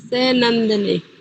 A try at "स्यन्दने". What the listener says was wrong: नंदनी नहीं, रुकिए रुकिए, क्षमा कीजिए, स्यंदने।